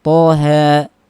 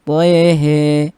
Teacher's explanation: Imam Syu'bah membacanya dengan imalah